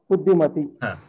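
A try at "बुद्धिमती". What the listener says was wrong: కొంచెం గుంజండి దీర్ఘం,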